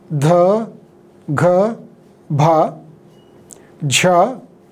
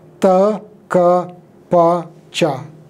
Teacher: Sanskrit had voiced aspirates dha, gha, bha, jha, whereas you notice that in Punjabi they have been replaced by, or they have shifted to voiceless unaspirates ta, ka, pa, cha.